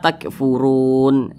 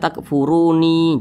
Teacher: Huruf nun tidak dibaca panjang, maka kita sukunkan. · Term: mad arid li sukun